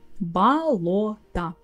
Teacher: this time the о in the middle is stressed and the rest is а